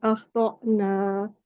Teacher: हलके झटके के साथ हलक के निचले हिस्से से अदा किया जाता है और इस बात का ख्याल रखा जाता है कि हमजा साकिन की जगह आइन साकिन अदा ना हो जाए जो कि हलक के दरमियाने हिस्से से अदा होता है।